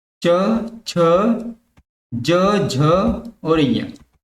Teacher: जिन व्यंजनों का उच्चारण तालु की सहायता से होता है उसको बोलते हैं तालु व्यंजन। जैसे च वर्ग।